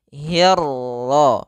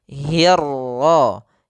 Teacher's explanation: Kita menebalkan 'ra'. Ro, tebal.